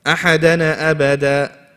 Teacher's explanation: If people rush, what will they say? Ahadana abada, and they let go of the tongue too fast.